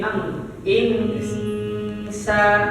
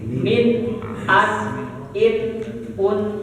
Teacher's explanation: kalau Ikfa bacanya jadi Ang Insa kalau izhar Nun jelas